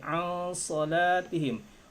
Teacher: huruf dibacanya pakai dengung karena itu merupakan ikhfa ikhfa itu samar ya menyamarkan Nun matinya sehingga hampir tidak terdengar